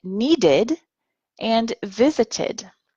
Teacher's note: we use the id sound, id, for words that end with the letters D and T